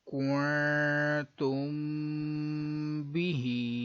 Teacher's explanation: اب اس میں نون ساکن ہے، اس کے بعد تا ہے حروف اخفا کا، ادھر اخفا کا غنہ کریں گے. میم ساکن کے بعد با ہے تو اخفاء شفوی کا غنہ کریں گے.